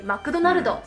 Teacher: because they speak in katakana form, they'll add vowels to words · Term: katakana eigo